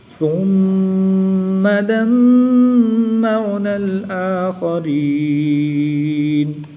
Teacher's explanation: میم مشدد ہے، یہاں پر بھی میم مشدد ہے تو ان دونوں میں غنہ آنی کر کے پڑھیں گے، کیونکہ میم مشدد میں ہمیشہ غنہ ہوتا ہے، اس لیے یہاں پر غنہ کر کے پڑھیں گے